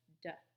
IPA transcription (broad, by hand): d